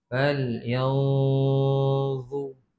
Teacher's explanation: Kerana za tu salah satu daripada huruf ikhfa yang 15. Maka kita kena baca dengan dengung, iaitu menyembunyikan bunyi nun ke dalam huruf za. · Sebut nun campur dengan za. Macam nak sebut za tapi tak sebut lagi. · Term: ikhfa hakiki